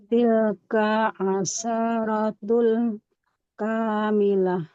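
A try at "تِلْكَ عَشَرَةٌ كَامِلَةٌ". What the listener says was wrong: Tilka, kafnya nggak boleh panjang. Fathah nggak ada alif di depannya. Tilka asyaratun kamilah.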